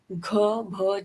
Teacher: कुछ साउंड में special vibrations होते हैं, जैसे ब्रेदी वॉइस जिसमें वोकल कॉर्ड्स लूज वाइब्रेट करते हैं और एयर फ्लो ज़्यादा होता है